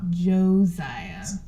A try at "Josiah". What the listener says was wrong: And it's an S, not a Z. Josiah.